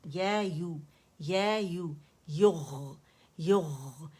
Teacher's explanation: یا کو ہم نے دمہ دیا، پکڑا مخرج کو، اس کو دمہ دیا، ہونٹوں کے مکمل گولائی لے کر آئے، پھر غین کے مخرج پہ گئے جو ادن الحلق ہے اس کا مخرج، ٹھیک ہے.